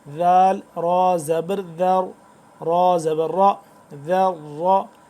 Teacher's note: ذال کو نرمی کے ساتھ پڑھیں گے اور را کو موٹا پڑھیں گے